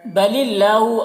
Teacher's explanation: اللہ کے لام کو باریک پڑھنا ہے اور کھڑا زبر ہے جو الف مدہ کی طرح ہے